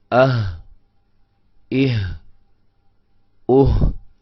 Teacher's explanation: हलक के आखिरी हिस्से से अदा होते हैं। तीन हिस्से होते हैं हलक के, एक सबसे ऊपर वाला मुंह के करीब वाला, और एक सीने के करीब वाला, और एक दरमियान में होता है। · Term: हमजा और हा